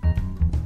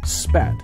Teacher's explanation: nature for example the sound represented by the ipa symbol is articulated by placing the lips together so as to completely block air flow through the mouth building pressure behind the lips using the pulmonic system the lungs